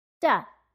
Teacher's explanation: de-stress the vowel sound in do, so the oo in do becomes a